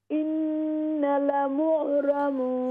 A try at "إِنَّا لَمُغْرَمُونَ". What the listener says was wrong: Yeah, we will stretch inna.